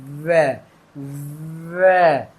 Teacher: ऊपर के दांत नीचे के ओठ पे लग रहे हैं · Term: दंत प्लस ओष्ठ